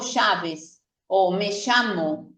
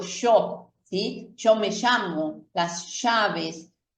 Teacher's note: Ese yeísmo rehilado es como que pronunciamos ese dígrafo, como si fuera la J del portugués